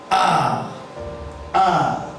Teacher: the lips are in natural position. The jaw is fully opened. Look at my mouth as I pronounce this. · This long vowel sound may be described as a back vowel sound, but the lips are in natural position. The jaw is fully opened.